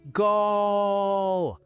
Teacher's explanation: they hold the O for as long as their lungs allow.